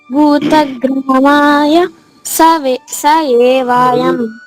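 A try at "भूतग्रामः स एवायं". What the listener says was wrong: దీర్ఘం ఇస్తున్నారు. 4వ అక్షరానికి దీర్ఘం లేదు. 4వ అక్షరం ఏముంది అక్కడ ఎంచండి. మొబైల్లో చూడండి, 4వ అక్షరం ఏముంది? మరి దీర్ఘం ఎందుకు ఇస్తావు? భూతగ్రామః స ఏవాయం.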